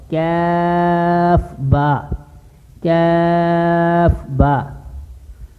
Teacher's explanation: کاف کا مخرج ہے زبان کی جڑ جو کوے کے پاس ہے، اوپر والے تالو کے نرم حصے سے ذرا منہ کی طرف یہ ادا ہوگا